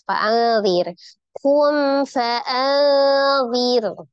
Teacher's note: Fa'adhir, ada nun sukun bertemu dengan dzan, hukumnya adalah ikhfa, dibaca samar ya. Kemudian roknya sukun sebelumnya berharokat kasroh, maka roknya juga dibaca tipis.